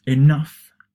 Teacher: notice that enough is stressed on the second part